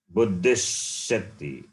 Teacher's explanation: Instead, you change this visarga to shakara